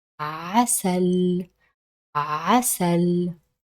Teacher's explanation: if you put your hand on your throat, you will feel the vibration when you pronounce the عين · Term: Ain